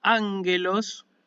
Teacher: la gutural líquida es la gama nasal, es decir, la gama que suena como N